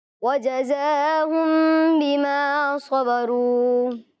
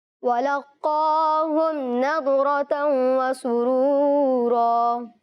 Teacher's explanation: میم ساکن کا قاعدہ اخفاء شفوی لگ رہا ہے، میم ساکن میں غنہ کر کے دکھائیں